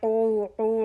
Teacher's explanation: عین حلق کے درمیانی حصے سے پیش کے لیے ہونٹ گول ہو رہا ہے. او واو مدہ، ہونٹ اچھی طرح گول ہو، پیش کے لیے بھی واو کے لیے بھی مدہ 2 کاؤنٹ ہونٹ گول میں کریں گے.